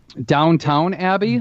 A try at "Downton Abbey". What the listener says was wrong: No, it's Downton Abbey. It's almost Downtown Abbey, but without the second W.